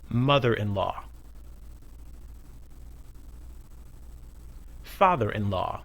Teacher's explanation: The stress in all these is the same. We stress the first word. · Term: compound nouns